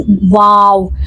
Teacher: जबान हमारी कहीं से लगेगी बाई जबान बीच में ही रहेगी। हमें अपने होठों पे फोकस करना है कि हमारे होठ वाओ पढ़ते हुए गोल हो जाए।